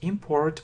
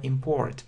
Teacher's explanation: the stress can be on the first syllable, and it can be on the second syllable. It depends on the meaning.